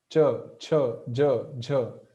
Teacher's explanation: our tongue is touching the spot just behind the upper teeth